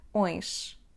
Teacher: O próximo som que vamos praticar é ões, como na palavra limões. Então temos o som nasal on. Depois disso temos o som y, oin. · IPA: /õjʃ/